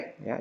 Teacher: cara membacanya itu fathah yang dimiringkan ke kasrah dan Alif yang dimiringkan ke ya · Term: imalah